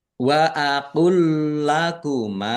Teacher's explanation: huruf yang kedua ada tasdidnya yaitu lam dibaca dobel langsung masuk ke huruf yang kedua · Lam sukun bertemu dengan huruf lam, ini namanya idgham mutamasilen. Idgham. Idgham mutamasilen yaitu bertemunya 2 huruf yang sama di mana huruf yang pertama berharokat sukun. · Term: idgham mutamasilin